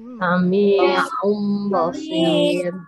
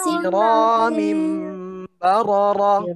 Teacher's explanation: Itu dengan suara dengung. Ya, jadi mim dan ba itu dibaca dengan suara dengung, ya.